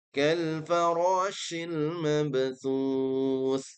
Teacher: Shin harus tafashi, yaitu disebarnya udara sebelum keluar dari rongga mulut. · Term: huruf shin